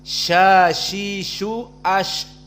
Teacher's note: di saat disukunkan ada nafas yang keluar